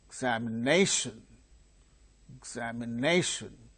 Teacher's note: the second syllable gains secondary stress